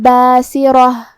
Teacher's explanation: را کو ہم تفخیم سے مطلب بھاری آواز میں ادا کریں گے، آخر میں یہ کلمہ پہ رکیں گے تو اس پہ ہا سے رکیں گے، ووجوہ یومئذ باسرہ تظن ان یفعل بها فاقرہ۔